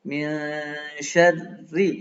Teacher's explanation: syarri itu dibaca tipis karena di kasroh, di tasdid kan, maka hukumnya ikut ro yang kedua.